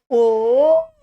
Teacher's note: अब बोलिए ओ, देखिए ओ आवाज कंठ से निकल रहा है और मुंह का ओठ भी आगे फेंक दे रहा है